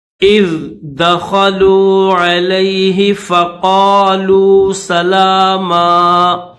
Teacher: اذ حمزہ کو ذال کے ساتھ ملائیں گے